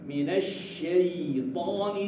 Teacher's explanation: huruf ya sukun itu adalah huruf yang mempunyai sifat rikhwah. Suara mengalir kan?